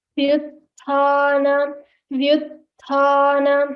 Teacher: Here, view, you should stress on va when you say vyuthana, and then focus on the mahaprana tha.